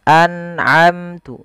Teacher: frasa an'amtu mengandung bacaan izhar halqi, yaitu nun sukun bertemu an 'ain.